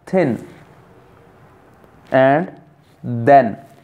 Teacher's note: To articulate these interdental between the teeth sounds, one inserts the tip of the tongue between the upper and lower teeth. तो जो हमारी टंग है, it comes between upper and lower teeth.